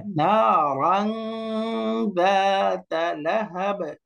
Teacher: নুন সাকিন তানবিন, তারপরে 15টা অক্ষর আসলে নাকের ভিতর লুকিয়ে অর্থাৎ বাংলা অনুস্বারের মতো করে গুণনা করে পড়তে হয় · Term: ইকফা